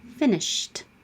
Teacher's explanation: Sh is voiceless, so keep your voice off. Finished, but you won't hear it.